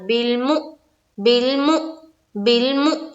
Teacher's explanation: यहाँ पर जो हमजा है हमजा को पढ़ेंगे, मीम को जब हमजा से मिलाएंगे तो झटका देंगे